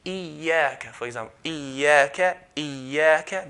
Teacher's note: So if we're stretching, for example, iyyaka, and if we produce a nasalization sound, then we're not doing it properly. So if I say iyyaka, for example, iyyaka, iyyaka, there's no nasalization sound.